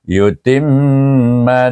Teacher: ta ya mim mim bertasyid dibaca dengan wajibul ghunnah